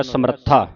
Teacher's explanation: ਰਾਰੇ ਉੱਤੇ ਅਧਿਕ ਲਾ ਕੇ ਉਚਾਰਨ ਹੋਵੇਗਾ